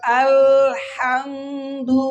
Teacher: হামজা কই থেকে উচ্চারণ হবে? হলকের শুরু হইতে।